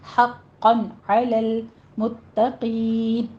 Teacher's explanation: حقاً میں ہا وسط حلق سے باریک پڑھیں گے، قاف کے پر تشدید ہے سختی سے پڑھیں گے، اور آگے تنوین کا قاعدہ اظہار ہلکی کریں گے، حقاً علی المتقین، تا باریک پڑھیں گے لیکن تشدید ہے سختی کیجیے یہاں پہ۔